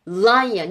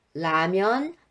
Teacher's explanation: lion이 훨씬 그 혀의 위치가 그 입천장에 살짝 범프 튀어나온 부분, 거기에 닿고, 라면은 좀 더 안쪽으로 들어가요.